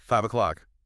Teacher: that was a sharp falling intonation of frustration